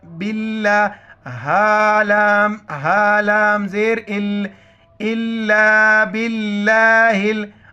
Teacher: लफ्ज़ अल्लाह से पहले बा ज़ेर है तो लफ्ज़ अल्लाह को बारीक पढ़ेंगे और हा को लाम के साथ, आइन को लाम के साथ।